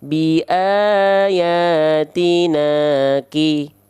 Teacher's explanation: dengan bunyi vokal a karena fathah tegak bukan kasrah tegak ya kalau fathah tegak berarti dua harakat a-nya dibaca Dua dua ketuk atau dua harakat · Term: Mad Thobi'i